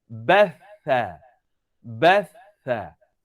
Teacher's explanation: Tak boleh dibaca dengan basa. Tak boleh berdesir. Kenapa? Sebab huruf sa ketika menyebutnya dia macam huruf zal juga, iaitu hujung lidah menyentuh gigi kapak atas. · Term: tak berdesir